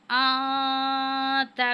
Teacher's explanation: अलिफ पे मद है, उसको हम 5 अलिफ के बराबर खींचेंगे और नून साकिन के बाद ता है। तो यहाँ पे हम जो है इफ़ा की सूरत में गुन्ना करेंगे